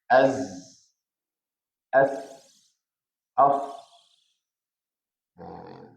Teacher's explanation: Hujung lidah dan hujung gigi atas bahagian hadapan.